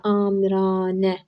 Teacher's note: Amiranə sözündə amiranə burada A uzanır və vurğu da sona düşür. Amiranə sözündə bir dənə uzanır.